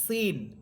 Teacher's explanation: জিহ্বার অগ্রভাগ সামনের নিচের দুই দাঁতের আগার সাথে লাগবে, সিন। আর শিন এর মাখরাজ হচ্ছে জিহ্বার মধ্যখান।